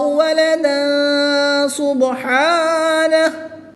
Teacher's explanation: تنوین کے بعد سین حروف اخفا میں سے ہے تو یہاں پر اخفا ہوگا